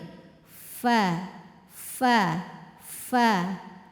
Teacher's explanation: Jadi bagian dalam dari bibir adalah saat kita posisi biasa maka tidak terlihat dari luar. Jadi ujung gigi seri atas menyentuh bibir bawah bagian dalam. Bunyinya mengalir suaranya ya. Kemudian anginnya juga mengalir. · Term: huruf Fa, huruf fa